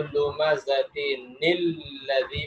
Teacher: ملا کے پڑھیں گے تو یہ حمزہ نہیں ہوگا، حمزہ گر جائے گا۔ تو پھر لمزتن، کیونکہ اس کے نیچے زیر ہے، تنوین ہے، اس لیے جب ہم اس کو پڑھیں گے تو لمزتن الذی پڑھیں گے۔